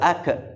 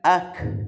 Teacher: huruf kaf adalah huruf yang mengalir